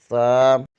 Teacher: زبان کی نوک ثنائے علیہ کے سرے سے لگے تو ثا ادا ہوتا ہے